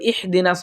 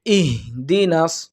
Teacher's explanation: ভিতর থেকে একেবারে কণ্ঠনালীর শুরু থেকে উচ্চারণটা হবে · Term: হামজা